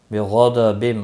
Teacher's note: غین اور ضاد دونوں مستعلیہ ہیں، موٹے پڑھے جائیں گے